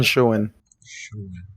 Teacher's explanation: I do still hear an eh there as a distinct vowel sound